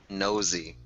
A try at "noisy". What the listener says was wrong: There's that little I in there that makes it an oi, right? Noisy. Noisy with an I and nosy without.